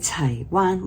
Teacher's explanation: Taiwan, Wan is high tone number 1